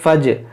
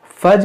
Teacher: व इन जनहू लिस्सल्मि फजनह, देखिए इस अलिफ को नहीं पढ़ेंगे, फ़ा जीम ज़बर फज, फज और जीम में कलकला होगा